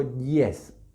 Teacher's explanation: es como una I extrema, porque está muy cerca del paladar cuando pronunciamos la I con la que empezamos yes, que se representa con este símbolo que para nosotros sería como una J, ¿sí? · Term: semivowel